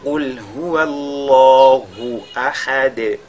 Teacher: Et ahad, nous avons la lettre dal, n'est-ce pas, sur laquelle on marque la pause. Elle deviendra donc sakina du fait de cette pause-là, et on fera donc qalqala sur cette dal-là.